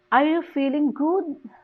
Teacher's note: the stress is on the good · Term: tonic stress